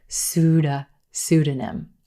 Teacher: with that but the p is totally silent in this word emphasis on the first syllable